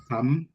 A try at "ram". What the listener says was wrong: Donc, on peut éviter de prononcer pas comme si c'était seulement H. Ram. Comme dans Romala.